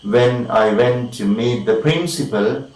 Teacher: Okay, say for example we have clauses in the first part, which is of course rather incomplete, or we have dependent clause or subordinate clause, we use the rising intonation. The sound is going up.